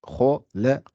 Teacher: Donc, khalaq, donc la kha est gonflée. Le lam n'est pas gonflé et le qa est gonflé. Donc, c'est pour ça qu'on dit khalaq.